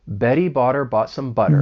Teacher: >> So, this is a great way to practice the flap T because there's so many of them and you're just saying that soft D sound